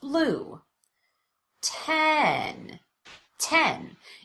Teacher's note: The vowel is louder and longer, and there's an obvious change in pitch. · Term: primary stress